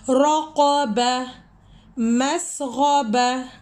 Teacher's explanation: جب بھی تا آئے گا اور ہم یہاں پہ سرکل پہ سٹاپ ہو رہا ہوگا تو تا کینسل ہو جائے گا، نیچے والا صرف ہا رہ جائے گا